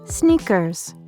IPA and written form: ˈsnikərz (Sneakers)